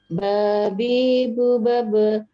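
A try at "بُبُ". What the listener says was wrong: Bunya juga 2 ketuk, Bu. Bubab gitu. Perhatikan tanda panjangnya ya. Ba itu ada. Secara umum sudah bisa lancar, tapi tawazun, keseimbangan bacanya belum pas.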